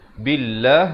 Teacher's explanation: lafzul jalalah ini dibaca nipis dua harakat